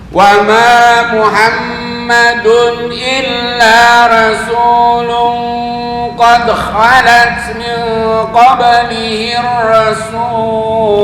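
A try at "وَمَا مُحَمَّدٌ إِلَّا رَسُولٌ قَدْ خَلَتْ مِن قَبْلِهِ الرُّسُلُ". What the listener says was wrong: Nah, kepanjangan qablihi rusul.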